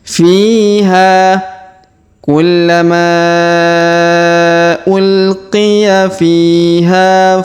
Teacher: huruf ha kita panjangkan dua harakat karena Alif di depannya